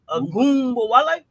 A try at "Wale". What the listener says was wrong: Got to pronounce the W. The W's not silent.